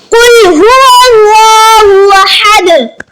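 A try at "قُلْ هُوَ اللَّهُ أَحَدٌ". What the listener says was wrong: یہاں پر قل قاف دو نقطے والا قل پڑھا جائے گا۔ کاف کش والے قل کا مطلب ہوتا ہے کھا لو، اور قل فرما دیجئے، تو معنی میں فرق آ جاتا ہے۔ تو اس لیے ہر نمازی اس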